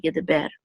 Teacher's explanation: if this word were alone, the accent would be on the last syllable